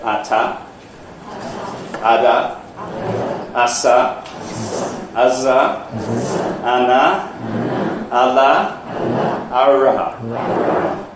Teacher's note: A whole lot of sounds which are made here. The tongue tip against the alveolar ridge.